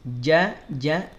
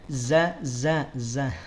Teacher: Jim itu ada di tengah lidah kalau Zai adanya di ujung lidah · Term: Jim dan zaai berbeda